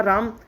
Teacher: जैसे हमने दूर से पुकारा राम, तो रा, एक तो बोला राम है ना, एक तो हमने सामान्यतः पढ़ा राम, तो रा जो है वो दीर्घ है, उसमें 2 मात्रा का समय लगा।